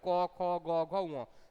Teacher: ক, খ, গ, ঘ, ঙ, সব ব্যঞ্জন বর্ণগুলি গলা থেকে উচ্চারিত হয় বলে এগুলোর নাম হচ্ছে কণ্ঠবর্ণ।